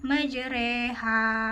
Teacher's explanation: Huruf ro pada bacaan majreha disebut imalah karena memiringkan huruf ro e.